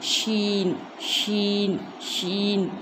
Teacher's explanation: ज़बान का दरमियानी हिस्सा और तालु को लगाने से शीन अदा होगा